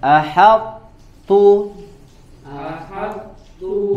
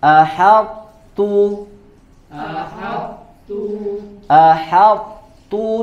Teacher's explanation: jelaskan dulu sifat idbaak tebal Suaranya Baru ta tipis